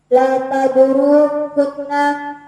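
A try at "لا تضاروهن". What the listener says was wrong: Bukan hunna, enggak ada tasdid.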